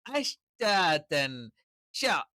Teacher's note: ആ ഷയുടെ ഉച്ചാരണം എന്ന് പറയുന്നത് നാവിന്റെ മധ്യഭാഗം അതിൻറെ തൊട്ടുമുകളിലുള്ള അണ്ണാക്കിൽ അണ്ണാക്കിൽ സ്പർശിച്ചുകൊണ്ടുള്ള ഒരു ഉച്ചാരണമാണ്